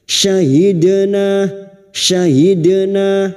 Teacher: dua harakat kita panjangkan Mad thobii syahidna syahidna huruf syin syahidna Dal sukun yang mati asli di tengah kalimat qalqala sugro jangan lupa dipantulkan